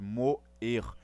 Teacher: E observem aqui que eu não fiz moir, moir. Esse E tem um som forte, moer. Ele destaca o seu som. Isso faz com que sejam duas sílabas, então aqui eu tenho duas vogais, vogais de verdade.